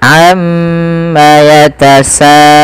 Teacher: kita harus memanjangkan bunyi sa sepanjang 4 atau 5 harokat dan tidak boleh dikurangi, tidak boleh misalkan amma yatasaalun. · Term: mad wajib muttasil